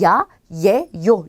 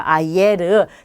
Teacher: 그래서 이아라든지 이에, 이요 이러다 보면 그걸 빨리 하게 되면 야, 예, 요 이렇게 이중모음이 돼요.